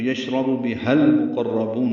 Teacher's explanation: ہا کو المقربون کے لام سے ملانا ہے تو یشرب بہل مقربون ہوگا.